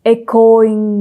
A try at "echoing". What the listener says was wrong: No, it's echoing. No, echoing. First syllable accent. Echoing. Not echoing. Echoing.